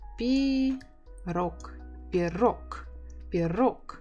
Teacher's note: you can hear that I don't say g, I say k.